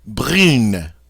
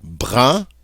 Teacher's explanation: Without the E, we have a nice nasal sound, brun. But once we add that E, the UN loses its nasality and becomes pronounced just regular. And so with the E, we pronounce it brune.